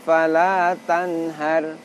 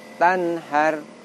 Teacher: Tanhar, walaupun pendek tetapi tetap ada dengungnya.